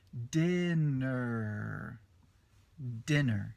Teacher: dinner tem o r bem forte no final